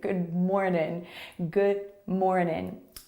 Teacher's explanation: at the end of morning we don't release that full ing sound we often just say in